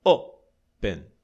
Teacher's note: Porque a tônica está na primeira sílaba.